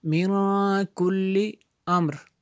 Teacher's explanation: نون ساکن کے بعد کاف حروف اخفا میں سے یہاں پہ اخفا ہوگا، اس لیے یہاں پہ غنہ کیا۔